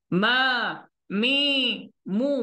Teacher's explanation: Ma dibuka. Mi separuh. Mu dimuncungkan. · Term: Makhraj pada baris